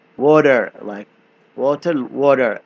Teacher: In American English, T sounds like soft D.